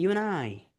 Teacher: এর ড সাউন্ড তো এমনি বাদ, তাহলে ইউ অ্যান্ড আই হয়ে যাবে